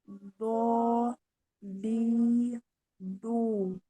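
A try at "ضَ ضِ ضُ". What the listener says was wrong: Jangan di depan ya. Bo di ini di tepi. Bo, di, bu. Naik ya. Pangkal lidahnya juga naik.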